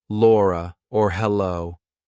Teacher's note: We do a light L before a vowel like Laura or hello. If there's a vowel after it, it's light.